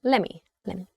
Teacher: So that same sort of uh le sound is preserved let him or letter uh but the middle sound is kind of cut a little bit is sort of contracted somewhat